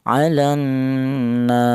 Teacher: Tul itu artinya panjang. Yaitu panjangnya tiga alif atau enam harakat.